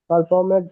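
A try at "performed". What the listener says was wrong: পারফর্মেড না, এটা পারফর্মড। পারফর্মড আর এর উচ্চারণ বাদ দিলে অথবা পারফর্মড।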